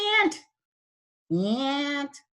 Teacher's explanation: there's a n which is a nasal consonant so we tend to get a little lazy and keep the vowel where the consonant is